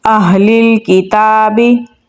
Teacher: अहलिल किताबी हमज़ा को हा के साथ मिलाएंगे और हा को गले के निचले हिस्से से निकालेंगे। लाम को लाम के साथ मिलाएंगे क्योंकि लाम के ऊपर जज़म है।